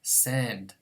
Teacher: because n is a nasal consonant I would pronounce the nasal variant of the phoneme